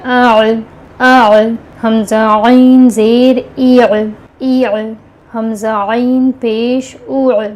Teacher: دوسری آواز ع اندر سے آ رہی ہے، حلق کے درمیانی والے حصے سے